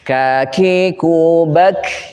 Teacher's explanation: Dari atas tapi paling bawah. Pangkal lisan dari atas paling bawah. Setara sama dengan makhraj qaf. Sejajar dengan langit-langit atas. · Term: Kaf